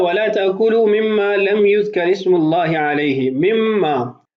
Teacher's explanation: اس کے بعد ہے وَلَا تَأْكُلُوا مِمَّا لَمْ يُذْكَرِ اسْمُ اللَّهِ عَلَيْهِ، مِمَّا اصل میں ہے من ما، نون ساکن ہے، ما بعد میم ہے، تو ادغام بھی ہوا اور غنہ بھی کیا جائے گا